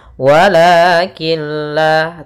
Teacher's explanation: membacanya masukkan huruf nunnya atau tanwinnya ke huruf lam sehingga Nun suara nunnya hilang dan tinggallah suara lamnya wakilla tapi dia tidak disertai dengan gunah tidak ditahan wakilla tidak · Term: idgham bilagunah, idgham bila gunnah